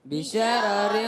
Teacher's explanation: دوسرے را کے نیچے دو زیر کی تنوین ہے، اس لیے باریک ہوگا · پہلا را پر، دوسرا باریک